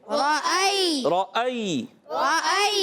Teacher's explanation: حمزہ کو تحقیق کے ساتھ، جھٹکے کے ساتھ، مگر یہ یا لین ہے، یا لین سے پہلے زبر ہے، یا لین نرم ہو جائے گا، حمزہ خوب جھٹکے سے۔